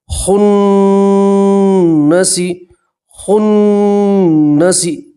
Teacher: تو نون کی آواز کو آپ 2 سیکنڈ کے لیے ناک میں روک کے رکھیں گے · نون کے اوپر تشدید ہے تو نون کو آپ 2 مرتبہ پڑھیں گے، اور نون کے اوپر تشدید ہے تو نون میں گننا بھی کرتے ہیں، ٹھیک ہے؟